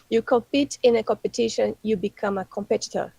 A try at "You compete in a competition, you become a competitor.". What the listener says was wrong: That's it. Perfect.